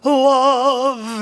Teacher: l which is almost a vowel and you don't have to give that as much push because the mouth is open somewhat when the l is pronounced